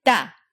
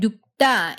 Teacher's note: Like in the word 눕다, In a case like this, the first syllable will end with an unreleased P sound, as in nu, and the second syllable, even though it's written with a lax T sound, 다, is pronounced tense. as in 따. So you get 눕다 instead of 눕다.